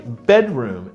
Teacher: Actually, bedroom is a compound word. And bedroom also stresses on the first syllable.